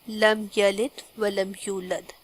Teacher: اگر میم کے بعد با یا میم میں سے کوئی حرف آئے گا تو ہمیشہ میم کی آواز کو ظاہر کر کے پڑھیں گے۔ یہ میم ساکن کا اظہار ہے، غنہ کیے بغیر جلدی سے پڑھیں گے